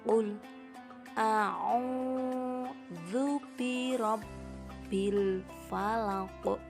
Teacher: Pada akhir ayat terdapat bacaan qalqalah kubro, yaitu pada lafal al-falaq. Maka cara membacanya haruslah memantul.